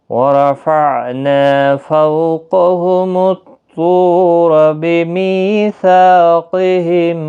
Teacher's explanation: قاف حروف مستعلیہ ہے، پر پڑھا جائے گا، طا بھی پر پڑھا جائے گا